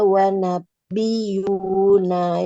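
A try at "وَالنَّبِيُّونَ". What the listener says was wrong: Ada nun tasdid, masya Allah. Wan nabiyuna min rabbihim.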